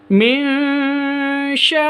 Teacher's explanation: Sya'ir ini satu kata. Berarti mad wajib sampai 6 ketuk, 5 atau 6 ketuk.